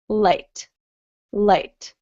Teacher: your tongue is sort of um in the front of your mouth up against your top teeth